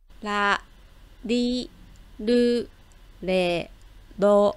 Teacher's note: c'est pas le r que vous roulez c'est ce qu'on appelle une tape alvéolaire donc en fait c'est un seul battement comme ceci écoutez-le en fait contrairement au l le l français